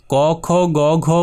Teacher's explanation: বর্ণগুলি উচ্চারণের সময় একেবারে গলার ভেতর থেকে আওয়াজ বের হয়। গলার ভেতর থেকে শুরু তাই এক নম্বর।